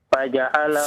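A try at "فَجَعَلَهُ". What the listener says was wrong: Fa lagi, fa. Faja'alahu, ayo fa. Tadi huruf fa-nya ya yang harus diperhatikan ya. Dan supaya diperbaiki ya.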